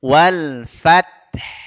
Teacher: kita berhenti di makhraj huruf hannya di tenggorokan bagian tengah